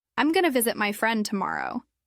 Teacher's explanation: That I am going to turns into I'm gonna, and sometimes they drop the subject completely.